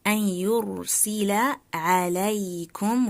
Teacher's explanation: Noon sakina followed by ya, which is a light letter, so the nasal sound أَنْ ya should be a light one.